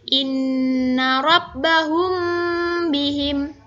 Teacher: bertemu dengan huruf ba maka Bagaimana cara membacanya cara membacanya adalah bunyi mim sukun dibaca samar-samar di bibir dan berdengung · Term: Ikhfa Syafawi